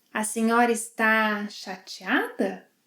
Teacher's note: In fact, she reduces ‘está’ to ‘tá’.